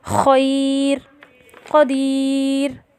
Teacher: را ساکنہ سے قبل اگر یا ساکن ہو تو حالت وقف میں باریک پڑھی جاتی ہے